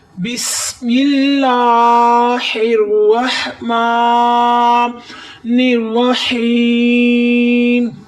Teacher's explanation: ادھر سین کی سیڑھی کی آواز نکالیں گے، الف والا لام باریک کریں گے، ہا کی آواز حلق سے نکالیں گے، را کو تھوڑا سا موٹا پڑھیں گے، پھر ادھر را کو موٹا پڑھیں گے اور ہا سے حلق کی آواز نکالیں گے، اور ادھر یا مدہ ہو رہا ہے، ادھر تھوڑی دیر آپ نے رکنا ہے۔